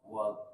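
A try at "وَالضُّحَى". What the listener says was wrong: Ah, jangan dipantul, Pak. Wal ribe. Langsung aja. Jangan dipantulkan. Wal ribe. Wal, jangan kol-kol lah. Nah ini ya masih banyak yang belum memahami ya karena do ini dianggap huruf dal. Jadi waderibe bacanya gitu. Ini salah ya. Kesalahan besar ini. Karena udah mengganti huruf do menjadi huruf dal.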